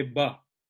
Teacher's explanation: Bengali people, they don't generally even say va. They say ba for everything. They don't usually pronounce va.